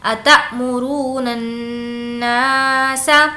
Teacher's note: نا کو کھینچیں گے کیونکہ الف مدہ ہے، الف مدہ کا مطلب الف سے پہلے زبر ہو۔